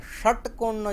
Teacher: તો આ શંકર ભગવાનવાળો જે શ છે એ તાલવ્ય શ છે અને ષટકોણનો જે બોલીએ એ મૂર્ધન્ય સ છે. અને સામાન્ય રીતે જે આપણે બોલીએ છીએ, સાચું જે બોલીએ છીએ એમાં જે સ છે એ દંત્ય છે કરીને.